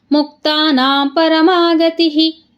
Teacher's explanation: ತಿ ಮುಂದೆ ವಿಸರ್ಗ ಇದೆ ಅದಕ್ಕೆ ಗತಿಹಿ